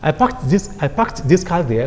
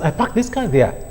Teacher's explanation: I parked this car there could easily be pronounced as I parked this car there. The past tense morpheme will be elided for the purpose of simple production.